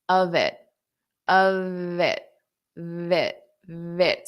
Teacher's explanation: I'll take care of it. So notice I use this V sound to transition.